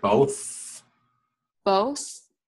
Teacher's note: your tongue actually comes through your teeth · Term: th sound